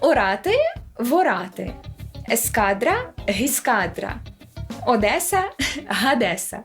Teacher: це такі приголосні які вставляються на початку слово яке починається на голосний щоб було легше вимовляти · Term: протетичні приголосні